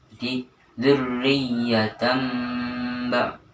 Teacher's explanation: mengganti tanwin menjadi huruf mim, kemudian dilanjutkan huruf setelahnya yaitu ba. Cara membacanya dzurriyyatan ba'duha, jadi tanwin hilang diganti dengan huruf mim. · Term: iqlab